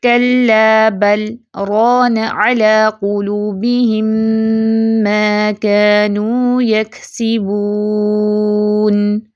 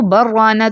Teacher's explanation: بل کے لام پر کیا جانے والا سکت لام کے را میں ادغام کو روک دیتا ہے اور لام کو واضح پڑھا جاتا ہے